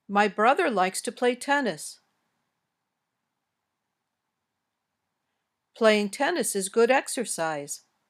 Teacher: they usually have statements in English usually have this intonation pattern your voice goes up on an important word near the end of the sentence then goes down at the end